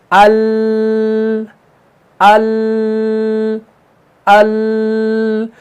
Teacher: जुबान का जो बगली किनारा है, ये दवाहिक से लेकर थनाया तक के मुकाबिल मसड़ों से लग जाती है, तो लाम अदा होता है